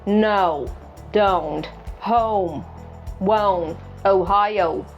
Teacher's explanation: Watch your lips. They should start more rounded like aw, and then relax slightly. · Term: O diphthong